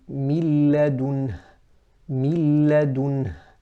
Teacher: So you don't hear a غنة with the lam. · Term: idgham with no ghunnah